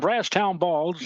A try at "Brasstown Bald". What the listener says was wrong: Singular. Brasstown bald. Bald, not balls. Bald. Brasstown bald.